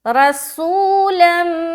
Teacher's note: را کو موٹا رکھنا ہے کیونکہ زبر ہے